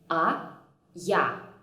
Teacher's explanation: Я basically consists of the consonant Й and the vowel А, and my lips remain in the same position for the both of them